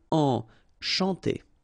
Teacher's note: C and H here, sh, and then A-N, nasal, en.